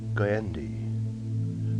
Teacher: The N was no more than a throwaway, no more than a light raising of the tongue to the roof of the mouth, as it went from the back-throated goy to the hard click of the D.